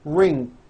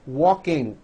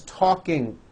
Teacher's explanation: there's just this little K sound at the end of the ing sound